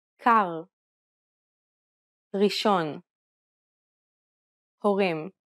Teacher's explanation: Unlike the English R, which is pronounced with the tip of the tongue at the front of the mouth, the Hebrew R is pronounced using the back of the tongue with a slight roll. You can think of it like gargling air at the back of your throat.